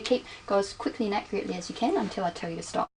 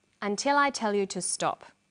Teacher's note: falling tone in English statements usually end in a falling tone the falling tone at the end tells the listener that the statement is finished